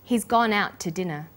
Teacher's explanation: we link out which is stressed and to which is unstressed the final T sound in out is held slightly longer